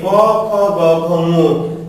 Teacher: কণ্ঠ বা জিহ্বার মূল থেকে উচ্চারিত হয় বলে এদেরকে বলা হয় কণ্ঠ বা জিহ্বা মূলীয় বর্ণ